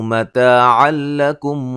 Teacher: کو موٹا، الف مدہ ہے، مد اصلی ہے، مد اصلی ہے، یہاں نون تنوین کا ادغام بلا غنہ ہے، غنہ نہیں کریں گے